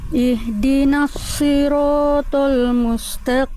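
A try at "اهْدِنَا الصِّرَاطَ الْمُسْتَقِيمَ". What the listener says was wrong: Pertama tinggal di huruf sode. Sodenya tebal. Ya Bunda masih si. Huruf tebal itu dia punya sifat yang namanya isti'la. Isti'la itu artinya pangkal lidah kita diangkat. Si. Coba Bunda ikuti saya. Si. Yang itu lagi. Dorong lagi lidahnya ke dalam, angkat lagi, rasakan. Si.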